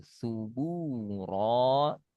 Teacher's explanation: Tanpa ada hams angin pada bu.